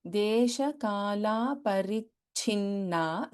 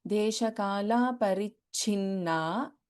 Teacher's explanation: in parichinna we have alpa prana cha and mahaprana cha both